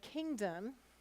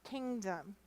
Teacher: And the O is a schwa sound, and so it's not said very clearly